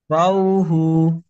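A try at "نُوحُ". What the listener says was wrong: বাও বা কেন হবে ভাই? দেখেন বায়ের নোকটা তো নিচে থাকে।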